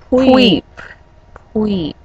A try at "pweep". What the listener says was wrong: You can't extend the E longer.